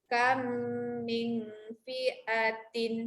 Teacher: Yang pertama kam, rapat bibir sebab bunyi mim yang kedua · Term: idgham mithlaini